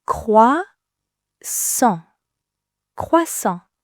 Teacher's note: say it with that beautiful French nasal sound. Listen for the N that isn't really an N.